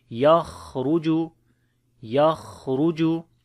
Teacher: So ya we connect with the kha, as kha we read in heavy sound, and also we make hams quality, yakh, ruju. Ra also we read in heavy sound due to dhamma